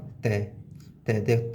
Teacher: तय बोला जाता है जीभ से और दांतों का सहारा लेके,